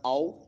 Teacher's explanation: یہاں واو ساکن سے پہلے زبر ہے تو جلدی اور نرمی کے ساتھ پڑھا جا رہا ہے، باقی حروف پہ آواز بند ہو رہی ہے، اور اس پہ آؤ آواز اگر لمبا کرنا چاہیں اس آواز کو تو لمبی کی جا سکتی ہے، لیکن جلدی نرمی کے ساتھ پڑھنی ہے۔ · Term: واو لین